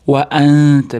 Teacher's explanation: Nun tga ixfo qilamiz. Ingichka harf bo'lganligi uchun ingichka ixfo bo'ladi. Va anta og'zimizda ikki chekkasida kichkina kulgichga o'xshagan chuqurcha paydo bo'lib ixfo qilinsa to'g'riroq chiqadi, chunki ingichka harf.